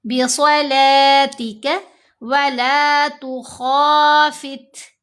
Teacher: بہت سے لوگوں سے غلطی کیا ہوتی ہے، بِصَلَاتِكَ، لام بھی موٹی کر دیتے ہیں۔ صاد موٹا ہے، لام کی آواز موٹی نہیں پڑھنی۔ بِصَلَاتِكَ وَلَا تُخَافِتْ، تا ساکن ہے۔